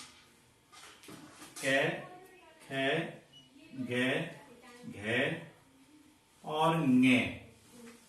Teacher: कै, ख, ग, घ, ङे का उच्चारण जहां ऊपर के कंठ से होता है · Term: कंठे व्यंजन